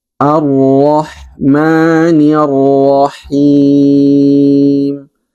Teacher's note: tebalnya huruf ro lalu juga kualitas huruf ha halus yang kurang maksimal